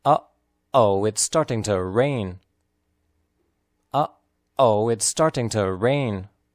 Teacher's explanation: The emphasized words are uh-oh, starting, and rain. The exclamation uh-oh is composed of 2 sounds clearly pronounced and means something bad is about to happen.